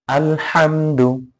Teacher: শুধু হাটা গলার মধ্যখান থেকে উচ্চারণ হবে আল হামদু। হামজা লাম জবর আল, হামিম জবর হাম, আল হাম, দাল পেশ দু, আল হামদু, আল হামদু।